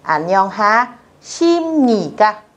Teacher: Mặc dù viết là bờ nhưng các bạn sẽ đọc là M.